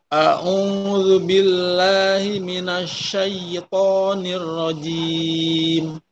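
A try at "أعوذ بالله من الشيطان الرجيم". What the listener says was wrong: Poknya tadi udah bagus, syai'nya udah bagus, tapi poknya tadi masih seperti tempo, masih tak. Ya, jadi kurang tebel. Minasyaiton. Minasyaiton.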